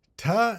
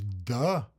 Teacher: The dental occlusives, ta, and then the voiced version is da